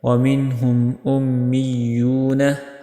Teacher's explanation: मीम के ऊपर इजहार शफ़ी, यहाँ पे आपने देर नहीं लगानी।